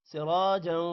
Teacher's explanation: را موٹا ہوگا را کے بعد الف ہے تھوڑا سا لمبا کریں گے